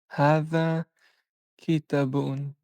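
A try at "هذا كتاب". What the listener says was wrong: Extend the a little bit more because of the alif. Kitabun. Because of the alif, we have to extend. Kitabun.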